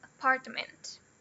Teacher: O part é a sílaba mais forte. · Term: primary stress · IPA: /əˈpɑː(r)tmənt/